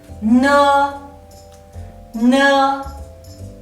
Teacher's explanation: Ne is an alveolar initial and the nasal sound. When you pronounce it, your tongue touches the part of the mouth behind the upper front teeth and completely block the air from your mouth.